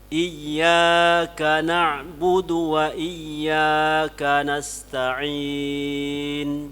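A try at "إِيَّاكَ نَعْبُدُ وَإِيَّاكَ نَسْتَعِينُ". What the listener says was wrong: Ya, mattabita lewat. Kurang sedikit harakatnya.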